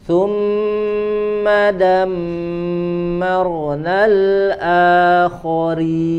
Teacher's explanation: ada mim bertasydid ya, berbeda maka harus ditahan